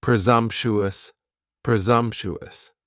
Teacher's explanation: Next is presumptuous, and presumptuous has 4 syllables, and the stress is on that second syllable, and the S almost sounds a little more like a Z